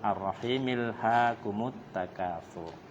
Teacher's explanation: jadi hamzah wasalnya dihilangkan